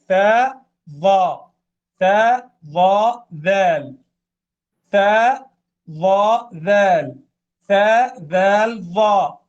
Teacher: تتشابه الضاء في النطق مع الثاء من ناحية خروج اللسان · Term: الحروف اللثوية